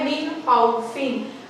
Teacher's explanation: نون ساکن اور next word ہے خا یعنی کہ حروف حلقی، تو یہاں پر ہم اچھے سے پڑھیں گے اس کو بھی اور غنہ نہیں کریں گے